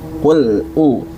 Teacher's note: karena lam tidak memiliki sifat Qalqalah Maka jangan ditambah dengan sifat Qalqalah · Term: sifat bainiah